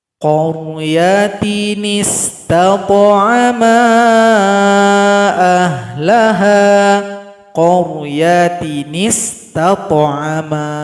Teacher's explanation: Sudah dibantu dengan harokat kasrah. Cara membacanya, hamzah wasal nggak dibaca lagi karena sudah digantikan oleh nun kecil. Kemudian nun kecil langsung masuk kepada sin sukun. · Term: nun wiqayah